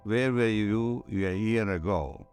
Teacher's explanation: But if you're speaking continuously, there's a famous sentence, where were you a year ago? There are no stops, no fricatives, no nothing. It's all vocalized sounds. There's nowhere to say where one word ends and where the other one begins.